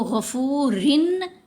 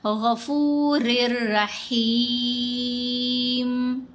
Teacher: तो गफूरिन तो नहीं पढ़ा गया। रिन में जो नून है वो खत्म हो गई। साइलेंट हो गई। रा को रा से मिला दिया। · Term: इदगाम